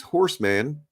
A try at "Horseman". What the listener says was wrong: You overpronounce the A. It's Horseman.